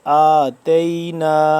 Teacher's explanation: حمزہ کھڑا زبر تھوڑا سا لمبا کریں گے